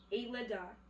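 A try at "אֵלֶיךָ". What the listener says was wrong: Nope. That's a Kaf Sofit. Eleka.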